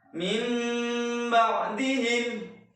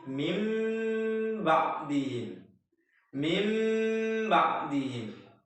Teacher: Iqlab adalah nun sukun atau tanwin bertemu dengan huruf ba, maka bunyi nun sukun atau tanwin diganti bunyi mim sukun disertai dengung